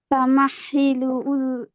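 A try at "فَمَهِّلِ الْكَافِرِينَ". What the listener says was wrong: আবারও উল হচ্ছে। ফামাহিলিল কা,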